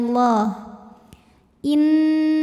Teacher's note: hurum huruf ro dibunyikan secara tafkhim karena ro berbaris dah maka dibacanya tebal pangkal lidah diangkat · Lam pada lafaz Allah atau lam jalalah dibunyikan secara tafkhim sebab huruf sebelumnya berbaris fathah. Maka dibacanya tebal, pangkal lidah diangkat ya, bunyinya Allah. Innallah. Kemudian ada hukum alif lam yang dinamakan dengan alif lam syamsiyah.